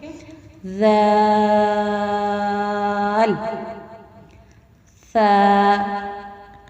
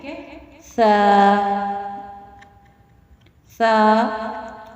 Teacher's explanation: زبان کی جو نوک ہے، جب اوپر والے 2 دانت جن کو ثنایا علیہ بولا جاتا ہے، ثنایا علیہ کے کنارے سے لگیں گے تو پھر یہ حروف ادا ہوں گے